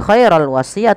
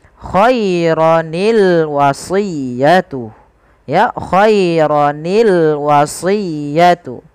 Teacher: Maka ada sebuah kaidah di dalam bahasa Arab, maka yaitu sukun yang pertama dikasrohkan sehingga berubah menjadi khaironi · sukun yang pertama dikasrahkan sehingga berubah menjadi Khaironi sehingga kita membaca lafal khairon Al wasiyah bukan lagi khairal wasiyah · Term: iltiqus sakinain